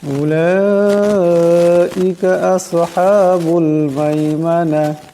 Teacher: লামের উপর মদ আছে, তাই এটাকে লম্বা করে পড়তে হবে